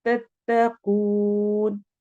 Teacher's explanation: तत्तकून में कौफ मोटे हरूफ में से है, और कू वो मद्दा हो रही है, इसको हमने लंबा करना है